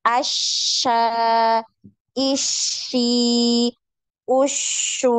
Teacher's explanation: ketika ditasdid maka tidak terputus suaranya Jangan as Sya nah tapi enggak boleh putus ya nyambung ya